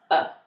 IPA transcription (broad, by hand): ə